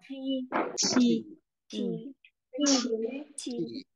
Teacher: Rồi đến âm quy thì vẫn là chữ chờ đấy, nhưng mà mình bật hơi mạnh ra